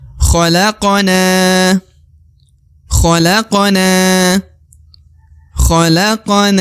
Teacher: na yang di ujung dibaca Dua harakat karena terdapat alif di depan huruf n